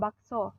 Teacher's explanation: Yang keenam, fonem O mempunyai dua macam realisasi, yaitu yang pertama direalisasikan sebagai bunyi O tengah atas belakang bundar apabila berada pada silabel terbuka seperti pada kata bakso.